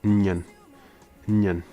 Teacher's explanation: the first person plural, we have the word nyan, which is two low tones